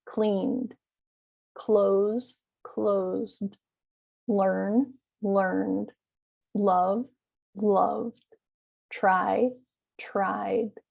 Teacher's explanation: notice that d ending is very faint it's not cleaned it's just cleaned it's barely um enunciated and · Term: small d sound